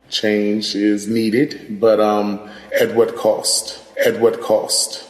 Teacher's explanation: another feature that we see in DC similar to New York is the raised thought cloth vowel